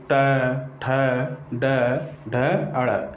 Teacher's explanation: जब हम ट वर्ग का उच्चारण करेंगे तो जिह्वा जा करके मूर्धा में स्पर्श करती है, जिससे ट, ठ, ड, ढ, अड़, इस प्रकार से।